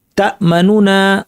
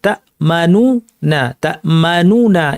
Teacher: আমরা দুইটা নুন পড়বো কিন্তু প্রথম নুনটাকে একটু ছোট করে পড়বো একটু ছোট করে দিব দৈর্ঘ্য এবং কন্ঠস্বর একটু নিচু করে দিয়ে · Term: রওম